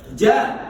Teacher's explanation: Jadi ketika kita mengucapkan ja, otomatis jaharnya ada, syiddahnya juga ada.